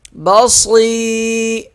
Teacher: صاد موٹا ہوگا اور یا کو ایک الف کے برابر کھینچ کر پڑھیں گے۔